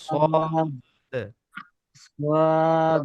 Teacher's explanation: সদ উচ্চারণ করতে 3 আলিফ টানতে হবে এবং দাল কলকলা করতে হবে